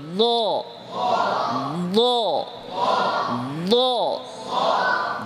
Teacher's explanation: ضদের মাখরাজ জিহ্বার গোড়ার দিকের উভয় পার্শ্ব